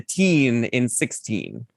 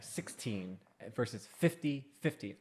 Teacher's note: you emphasize the teen in 16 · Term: accenting the second syllable